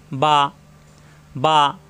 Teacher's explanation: বা 2 ঠোঁট থেকে উচ্চারণ, মিলানো ঠোঁট ছেড়ে দিলেই হয়ে যায়।